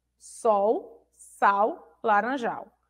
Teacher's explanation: o l no final das palavras ele tem som de u